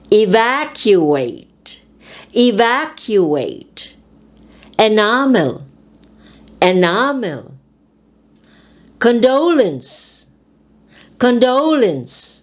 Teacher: we will put an accent or stress on the second syllable of the word